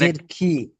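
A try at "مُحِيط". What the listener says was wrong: খ নয়, এখানে হা ইয়া তজের হিত। মুহিত। দেখেন এখানে মিম পেশ মু, মিমের উপরে পেশ আছে, পেশটি হলো হারাকাত। হারাকাতের পড়া তাড়াতাড়ি পড়তে হয়, টান দেওয়া নিষেধ, আপনারা সবাই জানেন।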